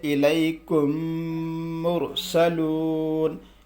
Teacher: میم ساکن کے بعد میم آئے تو میم کو میم سے ملا کر غنہ کے ساتھ پڑھا جائے گا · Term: ادغام شفوی